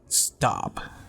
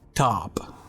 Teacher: with the word stop we find the unaspirated T whereas with the word top we have the aspirated T with the puffs of air